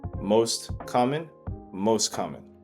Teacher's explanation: the t sound is gone, right? You don't hear the t sound. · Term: illition